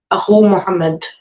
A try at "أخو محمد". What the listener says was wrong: Akhu. So you made it light. Akhun became akhu. There was no al with it. What did you say about Muhammad? Muhammadin, yeah, because it is a fully flexible word. So it is Muhammadin. But again, when you talk to an Arab, the Arab will say, no, that's wrong. And he will say, or she will say, it should be Akhu Muhammadin.